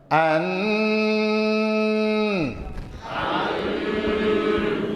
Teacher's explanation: آواز 100% ناک سے نکلے گی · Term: گنہ